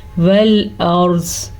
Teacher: را ساکن ہے اور را ساکن سے پہلے زبر ہے تو یہ را پور پڑی جائے گی